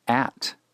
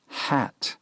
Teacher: The word at requires a constriction before saying it, whereas the word hat begins with a smooth breathing of the letter H.